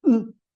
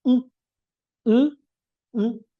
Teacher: lo que es u en versión oral esta vocal tiene también su versión nasal